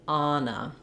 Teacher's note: the first syllable on has the clear a vowel Ana then our next syllable letter O has a reduced vowel